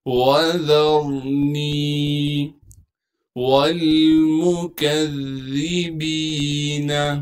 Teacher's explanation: را ساکن سے پہلے ذال پر زبر ہونے کی وجہ سے را کو موٹا کر کے پڑھیں گے۔ نون کو یا مدہ سے ملائیں گے کیونکہ یا مدہ ساکن ہے، اور یا مدہ ہونے کی وجہ سے نون کو ایک الف کے مقدار کھینچیں گے۔